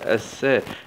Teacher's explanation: لام سكون شمسية مدغمة في السين المشددة مع الفتح